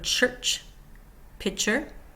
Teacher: Starts with air stop and moves to air release.